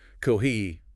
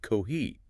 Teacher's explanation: match the exact pitch contour of a native speaker, which was more like kohi with a rising tone